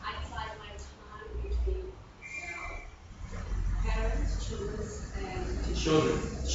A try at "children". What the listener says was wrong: Children, not the S, not the S.